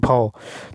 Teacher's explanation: भौ जो है ओष्ठ महाप्राण घोष व्यंजन वर्ण का उच्चारण है